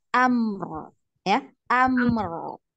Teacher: Nah, dialirkan mimnya karena sama ya, punya sifat tawasud. Nah, ini sama-sama punya sifat tawasud ya, ada aliran suara ya, dua-dua ya, dikit.